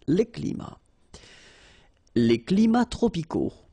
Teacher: even if we've got the plural form here, S, we don't pronounce the S, and then we don't pronounce the T either.